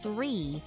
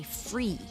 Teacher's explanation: they would do a lot of the f sound instead of th